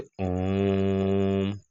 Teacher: तिगुना समय लंबा समय तक खींचा जाता है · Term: प्लुत स्वर